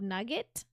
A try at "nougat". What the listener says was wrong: not nugget. It's spelled differently. It's spelled N-O-U. It's either nougat or nougat. Nougat. Nougat.